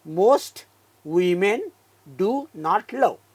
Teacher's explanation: डू मध्ये उ, नॉट मध्ये आ, ल मध्ये अ